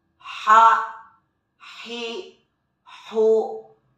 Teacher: Huruf ini dikeluarkan dari tengah tenggorokan kita. Ketika dilafalkan persis seperti kita melafalkan kata ayah, sah. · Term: huruf H